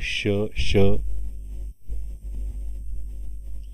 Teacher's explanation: उष्मे किंवा घर्षक व्यंजनवर्ण आहे, कठोर व्यंजनवर्ण आहे. · तालव्य व्यंजनवर्ण आहे, उगमस्थान तालव्य त्याचं. महाप्राण मिश्रित व्यंजनवर्ण आहे कारण त्याच्यामध्ये ह कार ऐकू येतो आपल्या